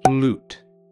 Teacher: The long U in this word doesn't sound like the name of the letter. Instead, it makes an oo sound.